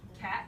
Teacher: we might do it like this cat with that glottal stop in there